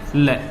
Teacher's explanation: श्वास वायु जीवा के दोनों तरफ बगल से बाहर निकल जाती है और मुख से बाहर आ जाती है